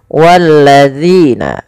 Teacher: Bagaimana cara mfalkan huruf dzal? Yaitu ujung lidah kita menempel dengan gigi dari atas kita